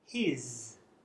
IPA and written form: hɪz (his)